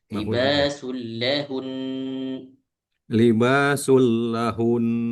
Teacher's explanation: Bukan hunya yang dipanjangin, tapi ghunahnya yang dipanjangin.